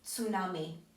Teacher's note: I know that's quite difficult because we don't have that in English, or I'm not really sure about other languages, but I think it's quite difficult. So imagine like T and S together, tsunami. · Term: bukva C